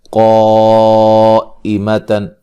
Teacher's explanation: قاف کو موٹا ادا کریں گے اور مد واجب ہے